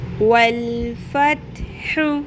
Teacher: ت باریک قلقلہ نہیں